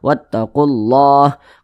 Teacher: Idgham Syamsiah karena dia cara membaca huruf lamnya itu dibaca idgham Jadi huruf lamnya itu langsung masuk ke huruf yang di depannya ini huruf lamnya ini kan dia diidgamkan nih tidak dibaca langsung